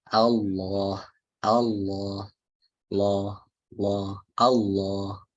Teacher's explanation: Tengah lidah ini ditekuk ke bawah atau masuk ke bawah kemudian tenggorokan kita sedikit dipersempit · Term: lam tebal